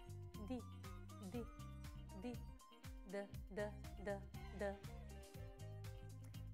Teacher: la punta che è lievemente contratta lievemente è appoggiata lì e quando noi pronunciamo la consonante D la lingua la punta della lingua scenderà e lascerà passare l'aria